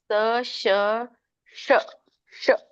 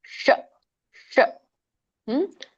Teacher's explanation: ಸ ಶ ಶ ಶ ಸ್ವಲ್ಪ ರೋಲ್ ಆಗಿ ಬರುತ್ತೆ ನೋಡಿ ನಾಲ್ಗೆ ಮೇಲಿನ, ನಮ್ಮ ನಾಲ್ಗೆ ತುದಿ ಹಲ್ಲಿನ ಹಿಂದೆ ಇರುವಂತಹ ಅಂಗಳ ಇದೆಯಲ್ಲ, ಹಲ್ಲಿನ ಹಿಂದೆ ಇರುವಂತಹ ಅಂಗಳಕ್ಕೆ ಹೋಗಿ ಹತ್ತುತ್ತೆ. ಶ ಶ ನೋಡಿ ಎಲ್ರು ಶ ಕೇಳಿಸುತ್ತೆ. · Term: ಮೂರ್ಧನಿ ಶ